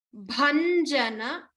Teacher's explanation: Bha is a Mahaprana. Put more effort to pronounce the bha. And ja has to be stressed upon.